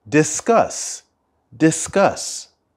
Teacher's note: the stress of the word discuss is at the end